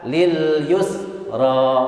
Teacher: Yus harus mengalir. Dia namanya, sifatnya rakhawah, mengalir. Yus tidak boleh ditahan.